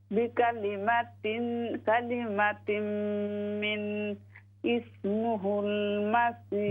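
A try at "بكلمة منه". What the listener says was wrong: बिकलिमातिन मिन, इसके आखिर में हा है।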